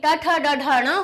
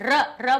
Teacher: र बोलिए, मूर्धा से टकरा रही है जीभ के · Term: मूर्धन्य